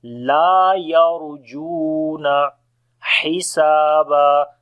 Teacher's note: Ha we read from the middle of the throat.